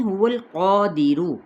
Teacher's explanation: لام کو ہلائیں گے نہیں۔ هو القادر، قا الف مدہ کے ساتھ ہے تو اس کو ایک الف کے برابر کھینچیں گے۔ قاف موٹا بھی ہے اور الف اس کے تابع ہو جائے گا، تو یہ الف بھی ساتھ ہی موٹا ادا کیا جائے گا، کیونکہ یہ الف حروف شبہ مستعلیہ میں سے ہے۔